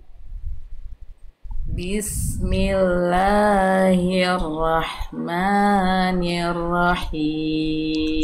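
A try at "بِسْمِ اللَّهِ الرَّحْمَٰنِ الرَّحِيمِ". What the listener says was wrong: Tinggal nanti sempurnakan bagian ni-nya. Jadi ni jelaskan vokal i-nya.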